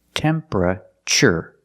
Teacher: Not temperature, but temperature. The TU makes a ch sound like chicken.